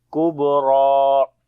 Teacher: So we say Tammatul Kubra. On the kaf we read in light sound, on the ba we make qalqala, ra we read in heavy sound.